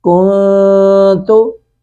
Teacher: کاف پیش نون کن، تا پیش تو، کنتو، یہ کنتو کو پڑھیں گے ہم کنتو، اخفا کرتے ہوئے نون کی آواز کو ناک میں چھپائیں گے